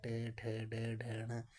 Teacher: मूर्धन्य यानी कि तालु के मूर्धा भाग से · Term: मूर्धन्य व्यंजन